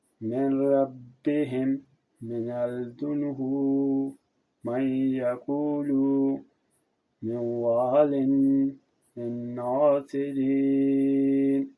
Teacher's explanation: ادغام نون ساکن و تنوین کے بعد جو میں نون کے مجموع کے 6 حرفوں یعنی یا، را، میم، واو، نون میں سے کوئی حرف آ جائے تو ادغام ہوتا ہے، یعنی نون ساکن و تنوین کو ان میں ملا کر ایک مشدد حرف کی طرح پڑھتے ہیں